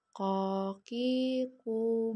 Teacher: keluar menyentuh pangkal lisan dengan langit-langit bagian kebelakang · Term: huruf ko